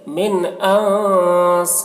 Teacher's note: نون ساکن کے بعد حمزہ ہے حروف حلقے میں سے تو نون میں اظہار ہوگا، نون کو جلدی پڑھیں گے